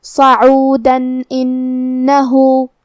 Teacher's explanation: اگر ہم یہ آیت کو اگلی آیت کے ساتھ ملا کے پڑھے تو حرف الالف کلمت انہو میں حروف الاظہار میں سے ہے، اور اظہار کا معنی ہے ظاہر کرنا، اور جو کہ تنوین کی اصلیت نون ساکن ہے تو ہم یہاں تنوین ظاہر کریں گے اور اسے نون ساکن پڑھیں گے اور بغیر غنہ سے یہ حکم کو ادا کریں گے